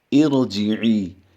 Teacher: را ساکن سے پہلے زیر جو ہم لگائیں گے وہ عارضی ہوگی، اصلی زیر نہیں ہے۔ را ساکن سے پہلے عارضی زیر ہو تو بھی را کو پر پڑھا جاتا ہے